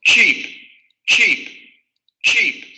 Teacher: sabemos que es el fonema africado postalveolar sordo